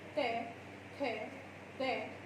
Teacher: तो जीभ कहाँ पर टकरा रही है आपकी, दांत पर